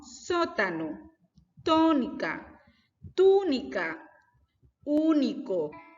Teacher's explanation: estas tienen su acento en la antepenúltima sílaba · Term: palabras esdrújulas